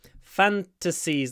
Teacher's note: The stress is on the f, I would say, the first syllable.